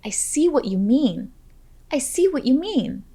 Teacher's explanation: make sure to emphasize the words see and mean